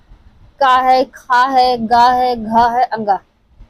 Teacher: क वर्ग के अंतर्गत आते हैं। तो हमारे कंठ से उच्चारित होते हैं। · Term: कंठ ध्वनि